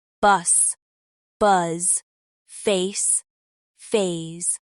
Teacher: The S is voiceless and sharp, like in see, and the Z is voiced, with vibration, like in zoo.